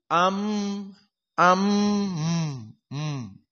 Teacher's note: dua harakat dihitung dengan jari am am Ma seperti itu dan mim musyaddadah hukumnya gunah dan gunah harus dari hidung maka makhrajnya dia kisum am am di sini keluar dari hidung